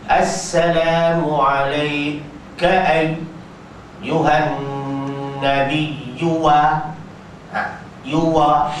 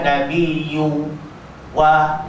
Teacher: Jadi dia tak ada kemahiran memasukkan huruf waw di situ. Bukan memanjangkan dia, tapi memasukkan harakat waw tu pada kadar cepat.